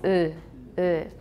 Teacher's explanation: in japanese it's not ooh actually it's uh uh it's got lip spreading